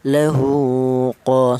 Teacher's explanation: Di mana masalah qasirah ini panjangnya yaitu satu alif atau dua harokat atau dua ketukan